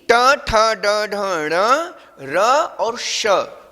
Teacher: इनका उच्चारण स्थान क्या है, मूर्धा है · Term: मूर्धन्य